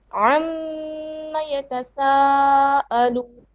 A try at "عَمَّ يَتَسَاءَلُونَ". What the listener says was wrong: It's not long enough, sister.